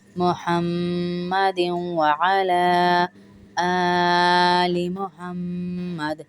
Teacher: اس کو دال کو واو سے ملا کے بھی پڑھ سکتے ہیں